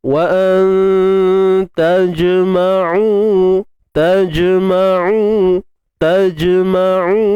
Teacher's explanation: Wa tajma'u. Jim yang sukun, qalqalah sughra